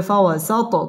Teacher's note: فوسطن به جمعا ফাওয়া ঠোঁট গোল করে উচ্চারণ করতে হবে ফাওয়াসাত ত কলকলার হরফ ধাক্কা দিয়ে পড়তে হবে